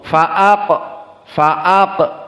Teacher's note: perlu diperhatikan qaf di sini sakinah qalqalah sughra. Fa'aq, fa'aq, tidak dibaca fa'aqbaroh, dan ini kebanyakan dari kalian fa'aqbaroh dulu, sekarang tidak.